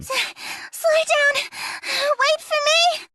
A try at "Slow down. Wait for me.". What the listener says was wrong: Perfect. Slow down. Wait for me. That's how we would say it.